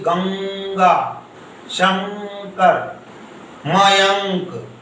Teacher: नासिका अनुस्वार केवल बिंदी, आप बोल के देखिए गंगा, शंकर, मयंक, तो ये जो बिंदी का उच्चारण स्थान है वो केवल नाक से हो रहा है